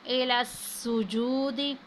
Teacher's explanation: اور سین کو جب ہم ادا کریں گے تو سیٹی کی سی آواز آئے گی